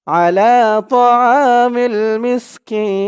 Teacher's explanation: জেরের পরে ইয়া সাকিন এক আলিফ টানটা 3 আলিফ টান হয়ে গেছে অক্ফ করার কারণে